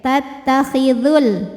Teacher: Namun dibaca panjangnya hanya jika berhenti saja. Kalau tidak berhenti atau kita mewasalkan bacaan, maka madnya gugur. Dzalnya ini dibaca pendek. Tattakhidhul, langsung ke lam.